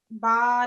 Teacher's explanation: You have to prolong the ba for like about 3 to 5, like ba.